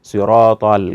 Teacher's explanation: huruf Shad dibaca yang seharusnya agak tebal dibaca tipis